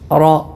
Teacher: റോ തഫ്ഖീം അഥവാ ശബ്ദപ്രതിധ്വനി വായ നിറയെ ഉണ്ടാകുന്ന രൂപത്തിൽ തടിപ്പിച്ചുകൊണ്ട് ഉച്ചരിക്കുക.